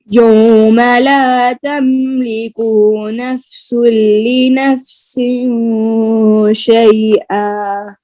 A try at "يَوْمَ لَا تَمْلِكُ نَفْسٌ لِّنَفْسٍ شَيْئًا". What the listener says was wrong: तमलिकू के काफ के पेश को आपने ज्यादा खींच दिया है, फिर गौर से सुने। यौम ला तमलिकु नफ्सुन लिनफ्सिन शैआ यौम ला तमलिकु नफ्सुन लिनफ्सिन शैआ